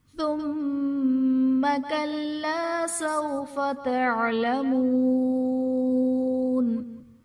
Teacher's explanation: ثم میں میم مشدد ہے، یہاں پر غنہ کر کے پڑھیں گے۔ کلا میں الف سے پہلے زبر ہے، الف مدہ کا قاعدہ ہے۔